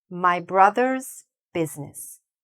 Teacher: If I don't hear the s, then it'll sound like My brother business